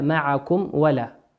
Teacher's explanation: الميم في معكم ميم ساكنة أتى بعدها حرف الواو، والواو من حروف الإظهار